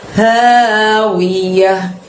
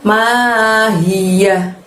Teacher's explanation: Tebel ya dari tenggorokan bagian bawah. Panjangnya 2, wiyah.